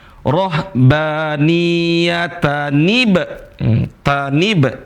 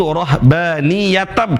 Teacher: ada nun yang berharokat kasroh, tanib jadinya.